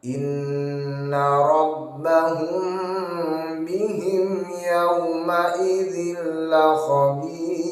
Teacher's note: Inna dengung, satu alif ada dua harokat.